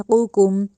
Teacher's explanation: قوف جو ہے نقطوں والی اس کو ہم موٹا کر کے ادا کر رہے ہیں اور جو ڈنڈے والی ہے اس کو نرمی سے ادا کر رہے ہیں